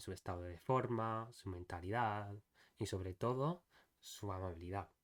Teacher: So for each thing, your voice goes up at the end